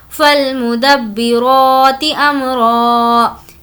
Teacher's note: यहाँ पर रॉ को खींचेंगे क्योंकि इस पर खड़ा ज़बर है